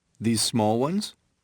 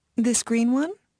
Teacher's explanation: use rising intonation to ask for clarification